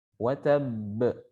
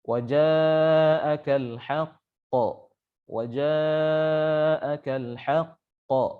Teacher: qalqalah kubra atau qalqalah yang besar itu lebih jelas pantulannya